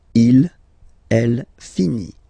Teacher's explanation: So IT, final T not pronounced.